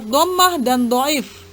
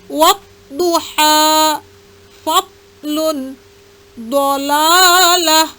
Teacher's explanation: pada tepi pangkal lidah dengan geraham kiri dan kanan memanjang ke depan ada huruf dad, baik berharkat fathah, kasrah maupun dhammah, maupun berharkat mati ataupun sukun.